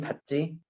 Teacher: 닫지라고 할 때는 발음이 찌로 나지. 예사소리와 예사소리가 만나니까 그래요. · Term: 된소리